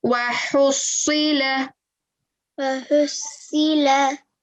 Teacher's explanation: remember your ha, that sound comes from the middle of the throat. So with your ha, remember, it's a throat letter.